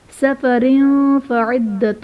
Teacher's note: سفر فعدۃ میں را کے نیچے 2 زیر کی تنوین، تنوین کے بعد حروف اخفا میں سے فا آ رہا ہے تو یہاں پر اخفا کا قاعدہ ہوگا، یعنی تنوین میں غنہ کر کے پڑھیں گے